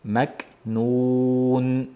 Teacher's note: faqat shu maknunda k ni hamsi bilinishi kerak